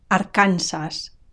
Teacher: notice the stress it's on the second last syllable Aransas and notice also the final s i don't drop it